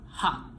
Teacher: tongue position, back, tongue height, low, lip rounding, rounded.